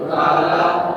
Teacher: falaq itu qalqalahnya mantulnya murni saja ya. Jadi alami, tidak ditahan. Kenapa? Karena tidak ada tasdidnya.